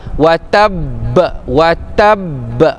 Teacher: Bila kita wakaf watab watab dia berhenti sekejap kemudian dia terlepas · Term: qalqalah akbar